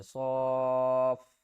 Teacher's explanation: بڑی مد ہے 5 الف کی مقدار کھینچنا ہے